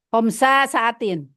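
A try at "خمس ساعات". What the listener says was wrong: Homsa itu kalau dimasukin ke kalimat, tapi karena kita bacanya tanpa memasukkan ke kalimat, maka homsu aja bacanya.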